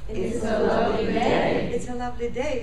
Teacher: so day uh was longer louder higher in Pitch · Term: focus